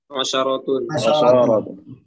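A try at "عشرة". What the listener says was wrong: Ya, asharatun atau asharatun. Ya, dua-duanya benar ya.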